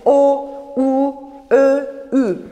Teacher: O, U, Ö, Ü seslerini söylerken yuvarlak oldu benim dudaklarım, yuvarlak ünlüler.